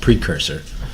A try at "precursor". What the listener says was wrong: No, he put the wrong emphasis on the wrong syllable.